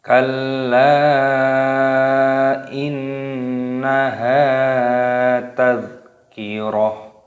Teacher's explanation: terdapat huruf dal yang berharokat sukun sehingga dimatikan. Jangan dibaca qalqalah.